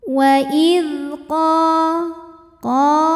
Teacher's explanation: adalah Mad Thobi'i zohiri sebab ada Alif yang sebelumnya berharakat fathah cara bacanya qof dipanjangkan dua harakat